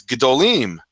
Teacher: um when you're talking about more than one big thing and the kamat turns into a shva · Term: pre- tonal shortening